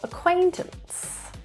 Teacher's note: stress is in the second syllable